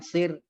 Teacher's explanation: Ya, ini hanya untuk mengingatkan kita bahwa ro kalau dia sukun baris atas maka dia mufakham, dia tebal. Kalau ro sukun di baris bawah maka dia tipis. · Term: Tarqiq